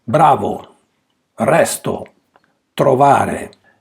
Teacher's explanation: When you read a word containing a single R, it is enough to make feel only one tap of the rolled R.